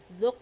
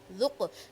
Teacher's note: جب ہم نے ذق کر دیا تو اس کے اندر ہمارے قلقلہ کی ادائیگی ہوئی، یعنی آواز لوٹ کے آئی ہماری